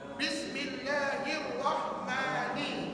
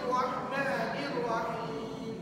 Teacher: Maknanya bila kita sambung perkataan tu jadi satu ayat, maka ini akan menyebabkan automatik Hamzah wasal tak perlu dibaca.